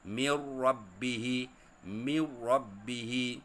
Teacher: menggabungkan bunyi nun dengan huruf selepasnya tanpa dengung. · Nun sakinah atau nun mati ataupun nun tak berbaris selepasnya huruf ra, maka nama dia, hukum dia idram bila gunnah. Jadi nun tu dihilangkan bunyinya atau digabungkan bunyinya ke huruf ra.